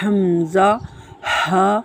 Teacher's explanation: حمزہ، ہا حلق کے نیچے والے حصے سے ادا ہوتے ہیں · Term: حروف حلقیہ